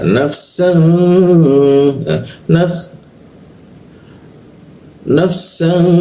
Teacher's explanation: Naf, san, nafsan, san bertemu fa dia. Nah ketika an bertemu fa maka didengungkan ditahan dua ketukan dia